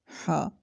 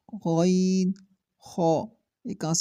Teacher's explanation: हलक के शुरू से जो मुंह की तरफ है